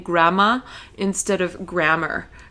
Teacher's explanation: he tends to drop his R's, right, completely from the end of the word, kind of like British English